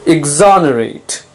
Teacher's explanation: notice the stress is on the second syllable